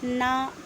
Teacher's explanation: ना जो है वो दंत और नासिका के योग से बोल पा रहे हैं